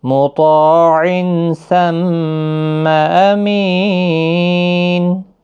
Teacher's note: تو الف مدہ ہے، حروف مستعلیہ کا حرف بھی ہے، تو پور پڑھا جائے گا، مطاع، عین تنوین کے بعد حروف اخفا کا سا آیا ہے، اخفا حقیقی ہوگا، ثم میم مشدد پر غنہ ہوگا